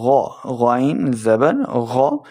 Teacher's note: غین حروف مستعلیہ سے ہے، موٹی آواز کے ساتھ ہم نے اس کو پڑھنا ہے